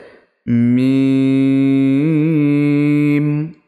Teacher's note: মিম এর মাখরাজ কি দুই ঠোঁটের শুকনো অংশ মিলিত হয়ে উচ্চারিত হয়